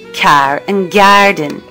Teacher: inserting a y sound after an initial K or G in words like car and and garden